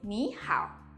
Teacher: Please take note that when we have two third tones, the first third tone is pronounced as the second tone. In 你好, 你 is pronounced as the second tone.